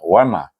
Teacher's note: Wau alif wa mim alif ma. Ada alif baca dengan mad asli dua harakat.